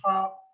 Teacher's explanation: जब ख बोलते हो तो अंदर से कुछ ज्यादा हवा निकलती है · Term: महाप्राण